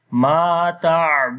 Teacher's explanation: So but make sure to that read the ain softly and make the moderation sound there, and dal we long due to waw madda. So we say ma ta'budun. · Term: tawassut quality